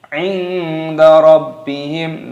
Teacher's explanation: nun sukun bertemu dengan huruf dal, hukumnya dibaca ikhfa, disamarkan. Inda rabbihim, baiknya berharokat tasdid, maka di sini ditekan, dimasukkan rabbihim.